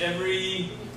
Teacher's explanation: when you say the first sound in thing, your vocal cords don't vibrate. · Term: Unvoiced